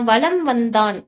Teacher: எழுத்து வந்திருக்குன்னா வகர எழுத்து வந்து வந்திருக்கு அப்படின்னு சொல்றாங்க இதனால வந்து என்னன்னா மகர மெய்யானது தனக்குரிய அரை மாத்திரை அளவிலிருந்து பார்த்தீங்கன்னா குறைந்து கால் மாத்திரை அளவுல ஒலிக்குது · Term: மகரக் குறுக்கம்